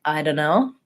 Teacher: in more casual speech, people will also tend to say more something like this, like I don't know, where the T is left out entirely